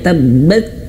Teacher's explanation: Kalau ayah bunda berjumpa huruf ta nih, huruf ta sukun, maka keluarkan anginnya